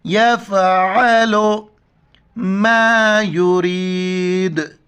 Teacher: عین کو گلے سے کرنا ہے